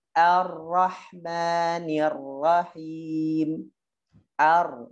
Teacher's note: Ro ketika dia fathah tebal. Tapi hati-hati a-nya, jangan ikut-ikutan or, jangan or.